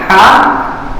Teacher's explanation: حلق کے بیچ والے حصے سے ہا نکلتا ہے · بیچ کا حصہ جو زبان کی جڑ جہاں ختم ہوتی ہے، ہم اپنے اس حصے کو فیل کریں، دماغ اس جگہ کو لگا لے جائیں، اور زبان کی جڑ ہے، جڑ کے اور نیچے تھوڑا سا وہاں سے ہا نکلتا ہے